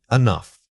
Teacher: The opening syllable needs to be extremely quick, barely audible at all. This helps you maintain speed without sounding rushed or panicked. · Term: natural reduction